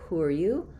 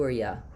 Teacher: I'd probably keep it as you, with the oo sound. Ya with the schwa is an option, and it's not going to sound too casual or too unprofessional, but I would say both of these options are good.